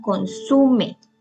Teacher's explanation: Consume lleva el acento en la sílaba su